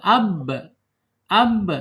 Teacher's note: ba ini mempunyai sifat qalqalah ya, qalqalah mantul, ab gitu ya, dipantulkan.